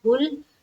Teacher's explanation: لام کے اوپر ہماری آواز رک جانی چاہیے